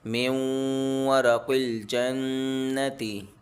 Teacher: نون silent ہو جائے گا، میم کو واو سے ملا کر پڑھنا ہے، قاف موٹا ہوگا اور نون میں غنہ ہوگا۔ میم نون یا زیر می، یا واو زبر یو، می یو، میم دو زیر من، می یو من۔ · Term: ادغام